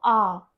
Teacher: जैसे कि अगर आप यहां पर देखते हैं अ की ध्वनि को अगर आप दुगने स्वर में लेकर बोलते हैं तो वह दीर्घ आ में बदल जाती है। जैसे अगर अ में हम अ को मिलाते हैं और उसको दुगना समय लेकर बोलते हैं तो वह आ इस तरीके से इस वर्ण में परिवर्तित हो जाती है।